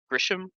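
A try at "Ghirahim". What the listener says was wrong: Yeah, there's no S. There's yeah, that's Girahim.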